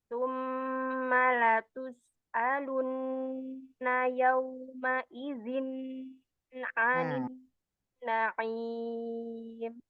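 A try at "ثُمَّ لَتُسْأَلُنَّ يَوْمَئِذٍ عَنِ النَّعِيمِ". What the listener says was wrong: Ya, hati-hati ya, Hamzah, tertukar dengan Ain tadi. jali kalau apa, salah huruf, salah harokat itu termasuk lahan jali yang mempengaruhi makna i'rabnya juga ya, kata bahasa itu. Sama itu tadi ya Bunda, lam sukun ya, lamnya masih al masih tebal ya.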